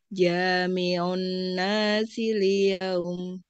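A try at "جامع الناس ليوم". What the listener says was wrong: Panjang, liyaum. Sekali lagi.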